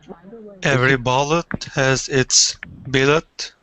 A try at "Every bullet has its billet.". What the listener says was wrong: Good pronunciation.